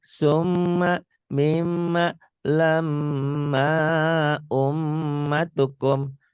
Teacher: dengung ke hidung ada gunahnya dia dan ditahan ada panjangnya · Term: gunnah